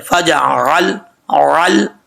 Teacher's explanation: عین لام زبر عل, اور لام ساکن ہے, جب لام کو پڑھیں گے تو یہاں قلقلہ بھی نہیں ہونا چاہیے. لام کے اوپر آواز جم جائے